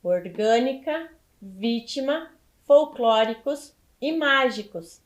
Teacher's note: elas são proparoxítonas porque elas estão acentuadas na antepenúltima sílaba